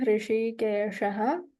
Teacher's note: here the Murdhanya Shakara is there